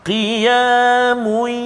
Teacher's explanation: masukkan bunyi tanwin ke dalam ya. Qiyamun dengung 2 rakaat. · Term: idgham ma'al gunnah